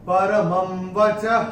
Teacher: विसर्ग आ रहा है, चरण की समाप्ति पे है, तो उसका उच्चारण केवल और केवल ह ही होगा